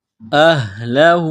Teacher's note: چشمے والی گول ہا ہے، منہ سے ہوا نکالنے کی طرح اس کو پڑھیں گے